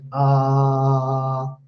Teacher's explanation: when we say ah, and we can continue like this, like ah, there is no obstruction. It's a free flow. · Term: vowel sound